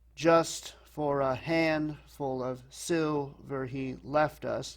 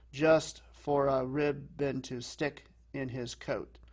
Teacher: it's like a big, little, little, or stressed, unstressed, unstressed. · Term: dactyl